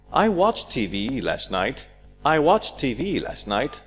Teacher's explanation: So we dropped the ED, which is the T sound. T sound. These are elided.